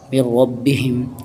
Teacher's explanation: یہاں غنہ کریں گے, ادغام مع الغنہ کریں گے. یہاں پر ادغام مع الغنہ ہوگا کیونکہ میں مشدد ہے.